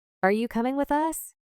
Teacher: you becomes ya and the melody stays similar but faster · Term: reduction